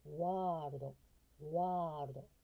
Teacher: これ▁R▁の発音が巻き舌で入ってます。